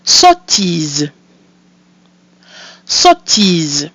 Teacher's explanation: O, followed by a pronounced consonant sound, which makes it an open O, We have the letter I, which is pronounced E, and we have our mute E at the end of the word, which is silent, giving us sottise.